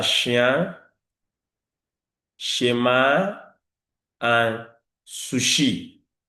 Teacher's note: I would say the phoneme sh is a palatal sound. Number one, because the tongue is at the back of the tongue towards the hard palate, you have the both sounds produced.